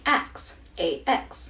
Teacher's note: The pronunciation of the word “ask” like “Ax” is very common in African American Vernacular English as well as in some southern dialects. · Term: metathesis